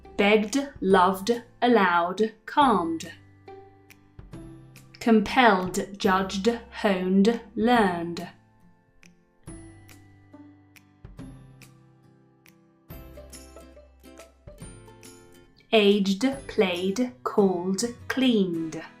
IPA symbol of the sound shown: d